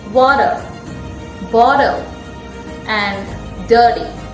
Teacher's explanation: This letter T, if it comes in between two vowels, or if it comes with the letter L, or if it comes with the letter R, it sounds like D.